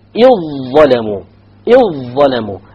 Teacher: You just ignore the dhal, you just merge it together. And by the way, every time this occurs in the Quran, there will be a shadda over the dha or whatever the letter that is being merged, in order to indicate to you that that should be merged.